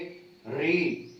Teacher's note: जिह्वा जो हमारी है वो थोड़ी सी वाइब्रेट होकर के उस मूर्धा के ऊपर टच हो रही